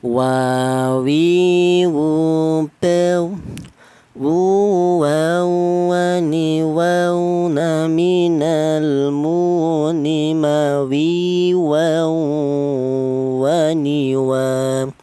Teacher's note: wawu ini dihasilkan dari kedua bibir yang renggang